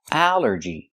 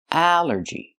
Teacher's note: It's three syllables. Allergy. The stress is only the first syllable.